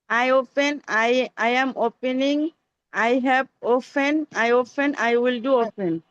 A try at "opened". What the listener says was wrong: লাস্টে একটা ড, বাংলা ড সাউন্ড যোগ করতে হবে। লাস্টে ড সাউন্ড লাগবে।